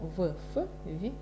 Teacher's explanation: И губно-зубные звуки – это В, Ф, В, Ф.